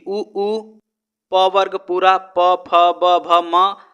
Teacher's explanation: इन सभी वर्ग वर्णों का उच्चारण स्थान ओष्ठ होगा